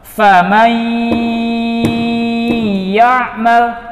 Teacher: menimbang panjang gunnah tersebut dengan 3 ketukan